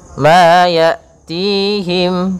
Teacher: Pada lafal hamzah ini usahakan sifat jaharnya tampak. Hamzah itu punya 2 sifat, yang pertama sifat jahar, yang kedua sifat syiddahnya. Maka dia tertahan nafasnya, tertahan pula suaranya.